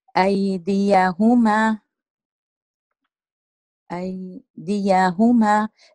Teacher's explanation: النبر على حركة الدال والهاء